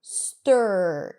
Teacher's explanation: Specifically, the stir sound that we're going to talk about today is an R vowel where the vowel right before the R is practically neutral. So, you don't really hear a vowel sound and the R takes over the sound.